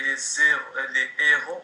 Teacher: Il n'y a pas de liaison au pluriel. Du H aspiré.